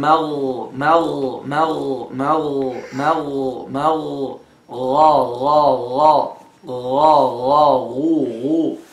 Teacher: so the root of the tongue will touch the uvula